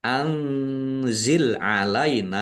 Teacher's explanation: nun sukun bertemu dengan huruf za bacaan ikhfa dibaca samar-samar